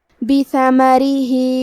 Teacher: حرف الرا کے نیچے زیر ہے، تو یہاں را کا حکم ہے ترقیق. ہم حرف الرا کو پتلی آواز میں پڑھیں گے. آخری میں ہا کے نیچے کھڑی زیر ہے، یہاں حکم ہے مد صلہ صغرا. · ثا کی ادائیگی زبان کے سر اور اوپر والے دانتوں کے اندرونی کناروں سے ہے. کیونکہ اس پہ اور میم پہ دونوں پہ زبر ہے، تو ہم یہ دونوں زبر کو برابر سے ادا کریں گے. · ہم حرف الرا کو پتلی آواز میں پڑھیں گے. آخری میں ہا کے نیچے کھڑی زیر ہے، یہاں حکم ہے مد صلہ صغرا. ہم اپنی آواز 2 مد کے برابر لمبی کریں گے